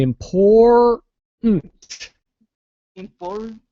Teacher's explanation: I'm hearing a duh kind of sound in there so you it's imploded so don't release your tongue